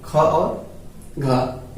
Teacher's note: इसमें बोलिए देखिए, इसमें कम समय और कम श्वास की आवश्यकता पड़ रही है इन सभी बोलने में, लेकिन ये ख और घ बोलते समय हम लोग थोड़ा सा रुक जाते हैं और श्वास अधिक की आवश्यकता पड़ती है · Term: महाप्राण